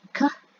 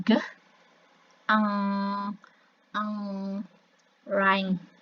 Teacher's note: So this is called as velar consonants. Jadi produksinya itu ada di lidah bagian belakang